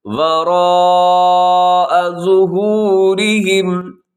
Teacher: وراء اس کے پر مد متصل ہے، موٹی بڑی مد ہے، آپ اس کو جو تھوڑا سا لمبا کیجیے گا 4 سے 5 سیکنڈ تک